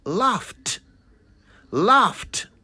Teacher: the last letter takes on the T sound instead of the D sound